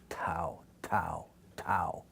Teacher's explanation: And it is unvoiced. There's very slight vibration in the vocal cords. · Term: alveolar unvoiced